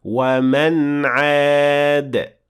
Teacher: the final part of this ayah contains idhar, because the noon was followed by ayn